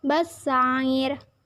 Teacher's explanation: Bassair merupakan hukum bacaan mat arid li sukun karena huruf mat jatuh sebelum huruf yang diwakafkan. Cara membacanya dengan panjangkan 2-6 harokat.